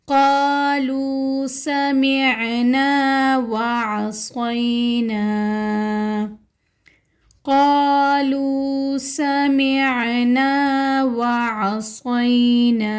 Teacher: قالوا سمعنا وعصینا، یہاں پر قاف موٹے حروف میں سے ہے، سمعنا میں سین سیٹی والے حروف میں سے ہے اور عین موٹے حروف میں سے ہے۔ وعصینا میں عین موٹے حروف میں سے ہے اور صاد کو ہم منہ گول کر کے ادا کریں گے